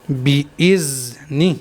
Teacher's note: یہاں پر دیکھ لیتے ہیں بِإِذْنِ، اس طرح سے ذال کو پڑھنا ہے۔ غلطی کیا کرتے ہیں بعض لوگ، زا ادا کر دیتے ہیں یہاں پر ذال کی جگہ